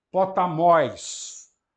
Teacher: aquele oi é um ditongo longo, cá está o acento circunflexo